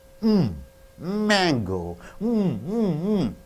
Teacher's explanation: So M is the easiest and most obvious like B. The lips come together.